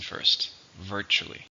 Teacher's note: How many syllables are in virtually? 3. Stress on the first.